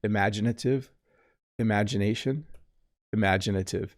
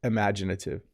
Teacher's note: i barely say the first vowel don't i